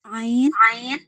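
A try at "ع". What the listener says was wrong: Oke, keren.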